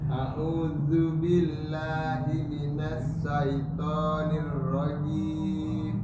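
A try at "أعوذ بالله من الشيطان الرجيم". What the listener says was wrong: Nah, dapat huruf za, huruf sya-nya berantakan. Iya, huruf za sudah dapat, sya-nya sedikit keliru. Huruf sya harus terpecah udaranya. Nah, sya. Tidak sa, salah. Sya. Syaiton.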